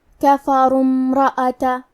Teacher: حرف الراء پہ پیش ہے تو ہمیں حرف الراء کو موٹی آواز میں پڑھنا ہے · کلمت امرأۃ کی شروعات میں الف ہے لیکن یہ حمزۃ وصل ہے تو ہم حمزہ کو ظاہر نہیں کریں گے۔ کلمت کفروا کے بعد حرف المیم کو پڑھیں گے، کفروا امرأۃ۔